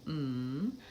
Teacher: there's no place for that air to escape so it actually the resonance actually escapes through my nose and it sounds a little bit nasal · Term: M sound